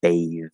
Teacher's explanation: The vowel changes from A to A, and the TH turns into a voiced TH